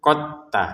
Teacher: huruf dalnya di sini sudah kita tidak baca pantulannya karena sudah bertemu dengan ta, jadi dimasukkan ketak. Jadi jangan dibaca qad tabayyana walaupun di sini sebenarnya ada sukun.